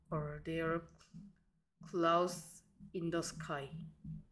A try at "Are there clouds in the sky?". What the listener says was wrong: 묻는 느낌 하나도 안 들고요. 다시.